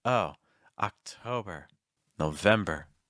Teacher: It's not O, it's not October, it's October. So you don't have to round your lips too tense. At the end, you can actually use straight lips if you want it.